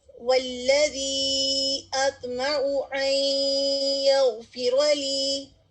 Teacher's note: اب ہم نے کیا کیا؟ نون کو یا میں ملا دیا، مرج کر دیا